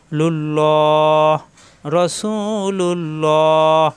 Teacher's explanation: আল্লাহ শব্দের ডানে পেশ আসলে আল্লাহ শব্দ মোটা হয়, আল্লাহ শব্দের ডানে জের আসলে আল্লাহ শব্দ পাতলা হয়।